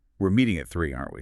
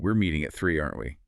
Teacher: With a falling tone, it's just a casual check. I'm confirming a schedule we both already know.